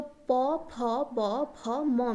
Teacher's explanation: Then आता है ओष्ठ्य वर्ग, जो प फ ब फ म में आता है, तो उसको प वर्ग भी कहते हैं, ओष्ठ्य वर्ग भी कहते हैं। जब ये 5 लेटर को हम प्रोनाउंसिएशन करते हैं तब हमारा जो 2 लिप्स हैं वो टच करते हैं एक दूसरे को